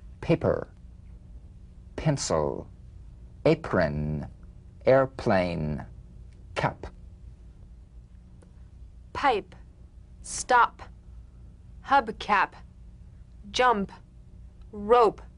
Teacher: The unvoiced labial stop consonant. The whispered tap of this drumbeat P is played with a light springing apart of the lips, just like for the B. On the springing away, feel a B in a whisper, without any puff of air.